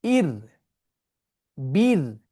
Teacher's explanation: রকে যখন কাসর দিয়ে সুকুন করা হবে তখন রটি উচ্চারণে লাইট হবে, পাতলা হবে, ঠিক আছে। অর্থাৎ সাকিন হারফ দিয়ে রকে সুকুন, ইর, বীর।